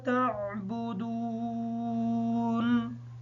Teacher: دال کے بعد واو مدہ ہے، دال کو لمبا کر کے پڑھیں گے تھوڑا سا تاکہ واو سے اچھی طریقے سے ادا ہو جائے، نون حالت وقف کی وجہ سے ساکن ہی ہوگی